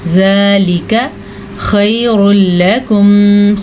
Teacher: خا کو پر پڑھیں گے اور اس کے علاوہ لام کو باریک پڑھیں گے